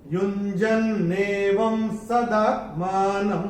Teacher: तो पहले चरण में व के ऊपर ये जो अनुस्वार आ रहा है, उसके बाद का अक्षर है स, और अनुस्वार के बाद जब स आएगा तो अनुस्वार का उच्चारण होगा म